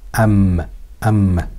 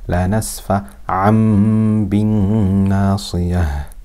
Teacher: whenever tanween is followed by a ba, instead of making a an sound, it makes an am sound. Am, am. But of course, we have ghunna for two harakat. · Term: iqlab